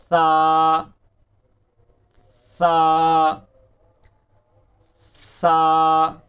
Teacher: سا کا جو مخرج ہے زبان کی نوک اور ثنایا علیہ کا سرا، یہ زبان کی نوک اوپر والے دو دانتوں کے ساتھ ٹچ ہوگی، سا نرمی کے ساتھ،